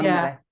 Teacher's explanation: You put the emphasis on the first syllable.